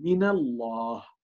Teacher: اللام الأولى في الله هي ساكنة، ومن النون ساكنة، ولكن في القراءة بنحول النون إلى مفتوحة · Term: التحويل